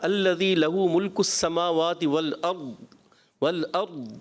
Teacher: ضاد میں قلقلہ بھی نہیں کرنا، مگر ضاد کو تھوڑا سا واضح بھی کرنا ہے، بالکل ختم نہیں کرنا نا